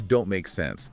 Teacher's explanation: And the K sound in make is similar. Your tongue goes up to the back of your mouth into position for the K sound, but the air isn't fully released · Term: unreleased consonants